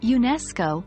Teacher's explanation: organization the stress falls on the second syllable of educational therefore when we say UNESCO we maintain the stress on the second syllable